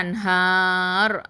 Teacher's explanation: அங்கே வந்து ரா வந்து தஃஹீமாக ஓதணும், அதாவது வல்லினமாக ஓதணும்